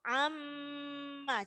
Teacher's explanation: Jadi cukup amma. Jadi tidak pakai ditekan, hanya mendengung saja.